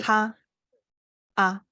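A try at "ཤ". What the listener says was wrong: I know you're shy, but you have to say it higher. Say sha, sha. the tone of the first tone is high, right? Like ma, like high.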